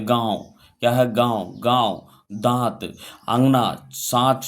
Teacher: तो हमारा हवा नाक से भी निकला मुंह दोनों से निकलते हैं, उसे अनुनासिका कहते हैं